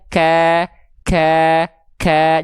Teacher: Jangan lupa dipercikkan nafasnya sedikit ya. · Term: huruf kaf